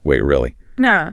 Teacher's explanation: Short, sharp intake of breath.